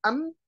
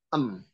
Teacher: Huruf nun terdiri dengan cara mulut terbuka. Huruf mim mulut tertutup.